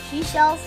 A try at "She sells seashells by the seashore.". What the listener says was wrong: not shells. She sells. She sells. Say it slowly. sells seashells by the seashore. By the seashore. She sells. try it a little faster. She sells, not shells. She sells.